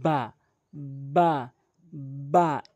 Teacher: এরপরে আসুন বা বা হরফটি দুই ঠোটের দুই ঠোটের ভেজা অংশ মিলিত করে। দুই ঠোটের ভেজা অংশ মিলিত করে এভাবে উচ্চারণ করবেন